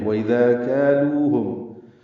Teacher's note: جو کاف سے آیا، کالوہم، کا الف مدہ، لو واو مدہ، اور ہم ضمیر ہے، میم ساکن پہ اظہار شفوی ہے